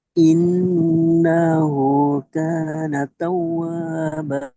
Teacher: উল্টা পেশ ও মাদ্দা সমতুল্য একালি পরিমাণ টান দিয়ে পড়তে হয় · হামজার নুন মুশাদ্দাদ ওয়াজিব গুন্না